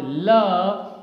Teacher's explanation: When you speak this sound L, your tongue touches your back part of your upper teeth, and the air passes from the left and right side of your tongue, and then the sound is spoken, right? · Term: lateral sound, lateral consonant